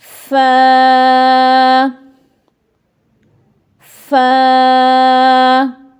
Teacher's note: اوپر والے جو سامنے کے دو دانت ہیں یہ جب نیچے والے ہونٹوں کے اندرونی حصے سے ٹچ ہوتے ہیں تو وہاں سے ادا ہوتا ہے